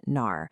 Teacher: But in northern Chinese pronunciation, it's very often nar.